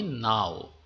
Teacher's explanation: এই নাও শব্দটা যদি বলি তখন ও এর উচ্চারণ কিন্তু স্পষ্ট হলো না। অর্ধেক হলো। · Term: অর্ধস্বরধ্বনি